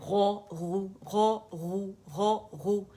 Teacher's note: اس میں ہمارے پاس جناب ضمہ ہے، پیش ہے، تیسرے درجے کی تفخیم ہوتی ہے۔